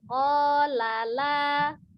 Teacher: La yang pertama pendek, la yang kedua baru panjang.